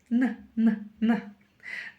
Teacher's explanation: произносим букву Н обыкновенную и замечаем, что у нас язык упирается в верхние зубы.